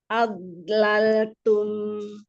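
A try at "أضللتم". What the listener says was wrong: Iya, ingat, nggak boleh, lidahnya nggak boleh nongol. sembunyikan di langit-langit, nempel kenceng.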